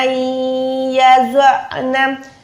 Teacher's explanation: व उलातुल अहमाल अजलुहुन्ना अय्यज़अना, नून साकिन के बाद या है, इद्गाम करेंगे गुन्ने वाला, ज़ौद मोटा, आइन हलक के दरमियान से।